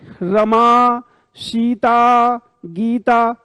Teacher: और प्लुत का प्रयोग होता है त्रिमात्रिक, दूर से बुलाने में